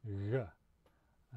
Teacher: so it's voiced and like the x sound it's a fricative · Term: voiced counterpart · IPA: ɣ